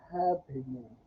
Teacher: So happening has three syllables, and the stress is on the first one.